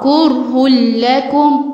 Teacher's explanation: والتنوين مع اللام هنا ادغام، يعني الاثنين يدخلوا ببعض، كره لكم، وهنا بدون غنة مش كره لكم.